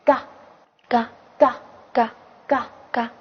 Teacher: 发音方法是不送气清塞音